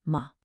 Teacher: we have the neutral tone. It's just short and light. No stress at all.